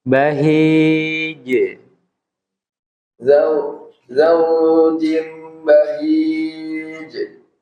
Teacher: Ingat huruf jim itu nggak boleh desis ya.